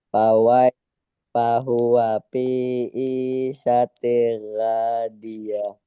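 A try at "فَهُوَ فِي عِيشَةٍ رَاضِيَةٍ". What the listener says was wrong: Idghamnya sudah betul. Hanya saja nanti kita perbaiki lagi hurufnya ya. Nah, kemarin kita sudah belajar makharijul huruf, tapi memang perlu difahami, perlu diingat bahwa memperbaiki huruf itu memang paling susah. Nanti huruf ainnya, huruf syanya, huruf ra-nya diperbaiki.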